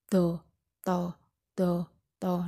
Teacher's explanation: ujung lidah bertemu dengan gigi atas menika apikodental